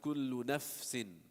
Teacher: if you don't put enough airflow, then you won't hear the fa fully. You'll be like F. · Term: hams